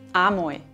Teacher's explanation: Das L wird zu einem Vokal bzw. zu einem Diphthong. In diesem Fall ein Oi. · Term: Vokalisierung